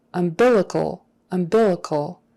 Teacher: the accent is on that second syllable